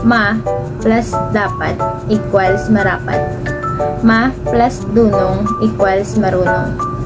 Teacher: Kung minsan, ang ganitong pagbabago ay nasasabayan ng pagpapalit din ng D at R. Ang ponemang D sa posisyong inisyal ng salitang nilalapian ay karaniwang napapalitan ng ponemang R kapag patinig ang huling ponema, unlapi. Mga halimbawa, ma plus dapat equals marapat. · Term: pagpapalit ng ponema